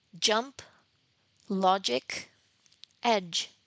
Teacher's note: In the case of its counterpart, the word the sound j j um there is vibration of the vocal cords, and this is why this sound is called voiced post-alveolar affricate